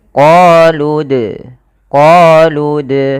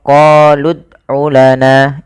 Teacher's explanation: Kemudian pada lafal dal sukun, di sini ada bacaan kita namakan dengan qalqalah. Dalam pelafalannya kita harus memantulkan dalnya.